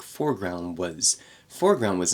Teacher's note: that ND in foreground foreground was reduces